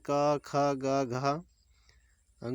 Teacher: यानी जिन वर्णों को उच्चारण करते समय जीभ का पिछला हिस्सा हमारे कंठ को छूता है, उसे हम कंठ व्यंजन कहते हैं